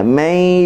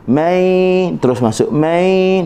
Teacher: Idgham, masukkan nun ke dalam ya. May dah tak bunyi man yu, tak bunyi dah.